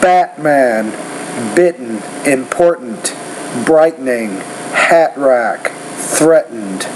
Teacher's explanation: It's a sound that it's more common in United States than it is in England. When that T's in the middle of the word, we don't really pronounce it. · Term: glottal stop sound